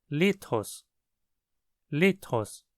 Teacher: A vogal iota na primeira sílaba é que recebe o tom alto. Assim, a sílaba li é a sílaba acentuada, e a palavra é pronunciada lithos.